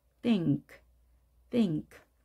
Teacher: n 발음은 뒤에 k의 영향을 받아서 n이 늘어지는 소리입니다 우리말의 이응 발음이 되겠습니다